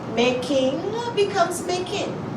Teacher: ING in Barbados, we usually drop the G, and making becomes making.